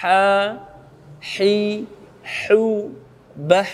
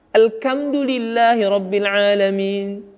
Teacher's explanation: Huruf ha bukan dari lidah bagian belakang. Ya. Ada orang membaca huruf ha dengan bacaan huruf ka.